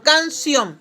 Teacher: Recuerde usted, palabra aguda son aquellas palabras que terminan, se carga la voz en la última sílaba